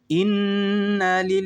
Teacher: jadi dibaca tipis karena ada huruf yang berharakat kasrah sebelum lafaz Allah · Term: tarqik atau tipis